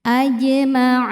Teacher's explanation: Ada hukum qalqalah sugra karena ada huruf qalqalah yaitu jim yang bersukun asli dan ada di tengah-tengah. Maka jim ini dibaca memantul pantulannya kecil. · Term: qalqalah sughra